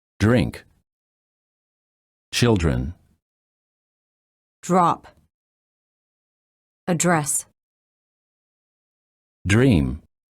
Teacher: When the D is followed by an R, the D changes and becomes an almost j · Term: D plus R